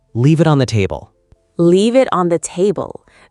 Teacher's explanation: The V flows into the I. The N flows into the TH.